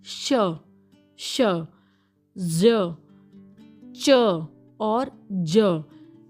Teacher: अल्वियोलस sounds are a type of consonant ल sounds in which the tongue makes contact with the रीजन of the roof of the mouth that is between अल्वियोलस and the hard palate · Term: पलेटो अल्वियोलस साउंड्स